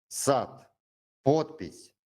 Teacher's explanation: The hard te sound occurs at the end of a word or before voiceless consonants. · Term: hard T sound